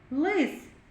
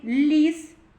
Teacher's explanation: у слові лис перший звук л він вимовляється і звучить твердо л а у слові ліс ми чує перший звук ль він звучить І вимовляється м'яко ль